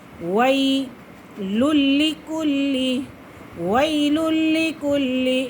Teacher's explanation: لام کو لام کے ساتھ ملائیں گے کیونکہ یہ لام مشدد ہے اور مشدد حرف اپنے پہلے والے حرف کے ساتھ مل کر پڑھا جاتا ہے۔